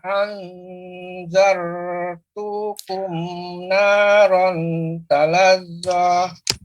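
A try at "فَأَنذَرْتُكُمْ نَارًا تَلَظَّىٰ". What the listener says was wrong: Tapi ketika membaca fa'anzar, ini jangan sampai lama. Zartukum, berarti ada apa namanya jeda ataupun roknya dipanjangkan berlebih. Padahal tidak dipanjangkan. Fa'anzartukum naran.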